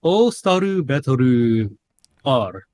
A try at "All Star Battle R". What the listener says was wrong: No, it's all Star, not Staru.